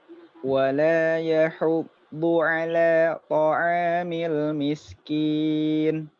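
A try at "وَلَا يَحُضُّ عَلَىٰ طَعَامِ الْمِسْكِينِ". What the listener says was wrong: Jangan wala dibuka lagi.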